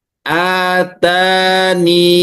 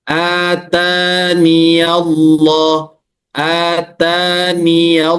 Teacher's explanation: membaca kasrah nun dan membaca panjang dua harakat